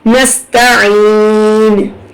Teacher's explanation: نس پڑھیں گے، سواد یا ثا نہیں لگائیں گے